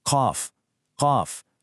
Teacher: It's deep right from the back of the throat.